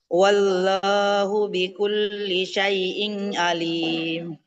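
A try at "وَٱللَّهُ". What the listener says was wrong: tidak wallahu ya. Lamnya tebal. Wallahu. Wallahu bikulli. Tidak wallah ya, tapi wallah. Tebal lamnya. Wallahu.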